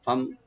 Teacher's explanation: ফাটাকে open রাখবে, মিম সাকিন এখানে আমরা জাহার করব